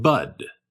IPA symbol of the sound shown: ʌ